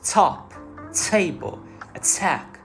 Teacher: So true T is when we hear an aspirated T sound, like in words top, table, attack, etc.